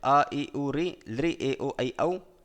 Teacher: इन स्वर वर्णों का विवृत प्रयत्न रहेगा। संवृत केवल ह्रस्व आकार का ह्रस्व आकार का प्रयोग की दशा में संवृत प्रयत्न रहेगा।